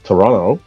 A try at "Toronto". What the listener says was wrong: there's only one te in Toronto